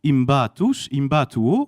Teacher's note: Impactus donne impatus, et il y a une sonorisation qui n'existe pas en latin, mais MP qui passe à MB